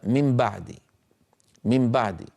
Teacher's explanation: النون من طرف اللسان مغنونة، الباء من الشفتين مجهورة ليس فيها غنة، فتأتي الميم فيها شبه بالنون وهو الغنة، وشبه بالباء وهو أنها من الشفتين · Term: القلب